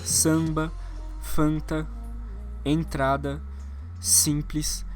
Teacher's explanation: no final essa espécie de n ou M é uma liberação nasal